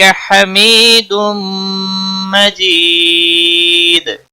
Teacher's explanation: حمید یا مدہ ہے، ایک الف کے برابر کھینچ کر پڑھیں گے۔ تنوین کے بعد حروف یرملون کا میم آیا ہے، ادغام باگنہ ہوگا۔ · دال وقف کی صورت میں دال ساکن پڑھا جائے گا، اس پر قلقلہ بھی ہوگا۔